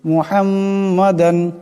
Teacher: এখানে দালের উপর দুই জবরের তনবিন এরপরে আইন আসছে এখানে গুন্না করা যাবে না ইজহার করিয়া বেলাগুন্না পড়তে হবে